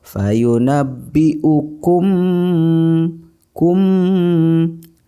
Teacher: cara membacanya yaitu suara mim mati ditahan serta didengungkan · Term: Ikhfa Syafawi